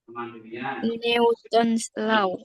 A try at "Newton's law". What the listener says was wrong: Newton's law, bukan new.